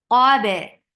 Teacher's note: Qaf is heavy for fatha upon your jaws. To make qaf heavy, you are lifting the root of your tongue up, and you're keeping your lips straight. Qab. And ba is light.